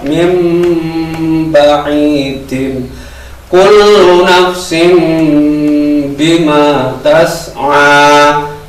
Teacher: setiap nun sukun atau tanwin ketemu huruf ba, mendengung, karena ini bacaan iklab